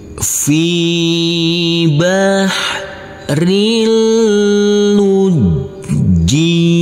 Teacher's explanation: Huruf ro yang berkasroh tanwin bertemu dengan huruf lam, maka di sini adalah bacaan idgham bila gunnah, maka tanwinnya kita leburkan